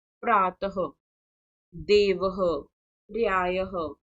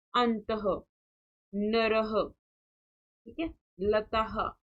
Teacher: जहां पर विसर्ग लगे होते हैं वहां पर हम ह का हल्का सा प्रयोग करते हैं